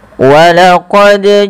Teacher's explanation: Karena dia huruf qalqalah. Dal memiliki salah satu sifat qalqalah yang artinya ittirab atau memantul. Ya, ada getaran dan pantulan. Maka ketika membacanya huruf dal ini wajib mantul.